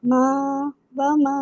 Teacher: فتحہ وا، اس کو 1 کاؤنٹ پڑھیں گے. میم فتح الف، یہاں پہ مد اصلی بن رہی ہے، اس کو 2 کاؤنٹ پڑھیں گے